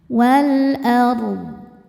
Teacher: Jadi jangan sampai hanya ke ra-nya aja wal ardh. Dodnya harus kebaca wal ardh. Tidak memantul dodnya dan tidak berangin.